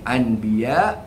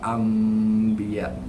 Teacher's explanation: Gantikan apa? Gantikan makhraj dia daripada nun tu an pergi ke huruf mim. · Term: hukum iqlab